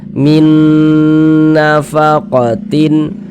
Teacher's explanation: Nah, jadi ini nun sukun bertemu dengan huruf nun, idgham mutamasilain shaghir. Nah, maka kita gunnahkan.